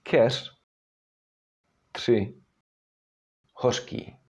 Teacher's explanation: it is unvoiced if it stands at the end of the word or if it is preceded or followed by an unvoiced consonant.